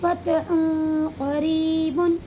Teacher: یہاں پر دو پیش کی تنوین کے بعد حروف اخفا کے 15 حرفوں میں سے قاف آیا ہوا ہے، اسی لیے یہاں پر اخفا ہوگا، اور اس دو پیش کی تنوین کی آواز کو ناک میں چھپا کر کے پڑھیں گے